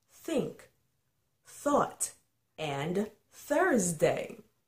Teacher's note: The unvoiced TH sound is made by placing the tongue in between your teeth and blowing on the tongue.